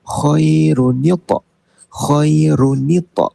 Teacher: kalau tanwin bertemu hamzah wasal, dia akan jadi tambahan nun baris bawah. Nun berbaris bawah di antara ra dengan hamzah wasal.